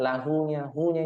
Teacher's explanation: disifati dengan mad asli atau Mad thabiii maka dibaca panjang dua harakat